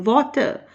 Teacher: लेकिन जब बोलेंगे वाटर, तो वाटर का जो पहला हिस्सा है WA, उस पर स्ट्रेस देंगे